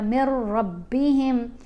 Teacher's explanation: نون تو سائلنٹ ہو گیا نا، میم کو را سے ملایا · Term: ادغام